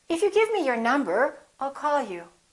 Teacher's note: So to indicate that you're not finished, that you have something more to say, let your pitch go up at the end of the first part of your sentence